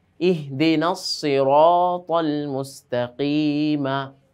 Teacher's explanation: রটার উপর আমরা দেখতে পাচ্ছি যে জবর এসেছে সেজন্য রটাকে মোটা করে পড়লাম আমরা